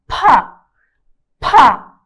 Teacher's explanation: pi assim pega sua palma da mão faz assim pa pa com muito ar da boca saindo aspirado